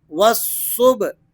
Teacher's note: با یہ حروف قلقلہ میں ہے، اس پر جزم موجود ہے، اس لیے آپ نے اس کو پلٹتی ہوئی آواز سے پڑھنا ہے